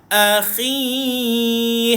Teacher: duduk kat hujung kerongkong berhampiran dengan anak tekak Tuan Puan keluarkan air sedikit